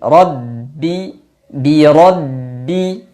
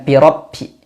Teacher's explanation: birbi huruf ro tebalkan ro ro ro berikutnya ba tasdid d dua bibir bertemu dan ditekan sedikit